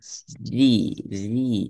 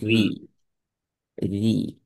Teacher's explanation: முன்னால இருக்கிற முன்பற்களுக்கு பின்னால் இருக்கிற அந்த தொண்டையோட மேல் பரப்புல நாவினுடைய முன்னால் இருக்கிற மேல் பரப்பு தான் படணும். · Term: மெல்லினமாக ஓதுற